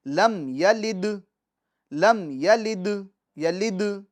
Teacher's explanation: یلد یہ جو دال ہے اس میں ہم وقف کرتے وقت ہم جنبش دیں گے، چونکہ یہ حروف قلقلہ میں سے، حروف قلقلہ میں سے، تو آواز اس کی لوٹے گی، لم یلد، لم یلد، یلد، ٹھیک ہے، مگر لم کے میم ساکن میں آواز نہیں لوٹے گی۔